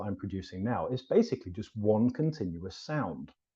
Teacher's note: there is no gap between each word that I'm saying right now